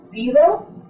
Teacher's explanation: that's a continuant D. You never stop the airflow completely.